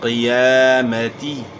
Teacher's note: قاف موٹے حروف میں سے ہے اور یا کے اوپر کھڑا زبر ہے، کھڑا زبر الف مدہ کا قائم مقام ہوتا ہے، تو آپ نے اس کو ایک الف کے مقدار کے برابر کھینچنا ہے. قیامتی، زیر کو اپنے معروف ادا کرنا ہے، مجہول ادا نہیں کرنا، یعنی تے نہیں پڑھنا.